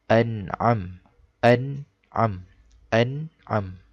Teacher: Di atas nun, apabila di atas nun mati terdapat tanda mati seperti ini, bermakna hukum itu adalah izhar halqi dan kita hendaklah membacanya secara izhar halqi. Okey, izhar halqi cara bacaannya ialah dengan membaca jelas tanpa dengung.